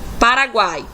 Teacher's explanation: O A está com um som sobressaindo, está com um som mais forte em relação ao U e o I. E, sendo assim, nós temos uma semivogal, uma vogal e outra semivogal. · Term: tritongo